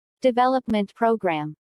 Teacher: since these two words make a compound noun the main stress falls on development